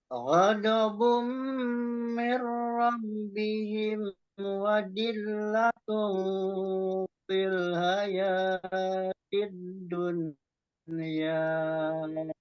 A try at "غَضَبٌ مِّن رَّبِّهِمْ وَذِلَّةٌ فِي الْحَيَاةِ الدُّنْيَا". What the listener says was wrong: Jadi fa itu lebih ke tegaskan lagi, dipertegas lagi F-nya. Feel. Feel satu terus kembali ke makhraj ha. Fil haya fil haya. Cara bacanya udah betul, panjang pendeknya sudah betul, dengungnya sudah betul.